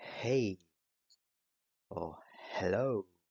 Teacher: Bueno, ese sonido de suspiro es el sonido glotal